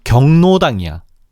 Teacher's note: 발음은 리을의 비음화가 적용된 경로당으로 한다